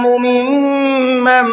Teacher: میم کے اندر دیکھیے میم پر تشدید ہے، غنہ کر کے پڑھیں گے، اور مم کے اندر نون ساکن کے بعد میں میم آ رہا ہے، اس میں بھی غنہ کر کے پڑھیں گے